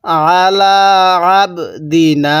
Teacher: এই আইনটা পড়ার সময় গলার মধ্যে হালকা চাপ দিয়ে পড়বো